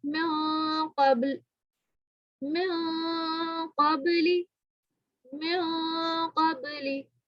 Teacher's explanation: یہاں پہ میں نے جو ہے کلکلا کیا ہے. قاف، قاف موٹا حروف ہے تو یہاں پہ غنہ موٹا کریں گے